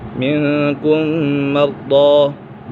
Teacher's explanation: میں ہمیشہ غنہ ہوتا ہے، اور یہاں ادغام شفوی بھی ہے، میم سکن کے بعد دوسری میم آ جائے تو میم سکن میں ادغام شفوی ہوگا، یعنی غنہ کر کے پڑھیں گے